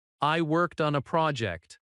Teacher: Avoid rising tone in statements because rising tone can sound unsure. Instead of saying, I worked on a project, with your voice rising, let it fall naturally.